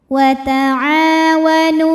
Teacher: Nu ini hukumnya juga matobi'i dhahiri karena ada waw sukun didahului baris dhammah, maka huruf nun panjang 2 harokat